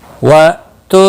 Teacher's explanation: حمزہ ساکن کو تھوڑا جھٹکے کے ساتھ پڑھیں گے · با ساکن پر قلقلہ ہوگا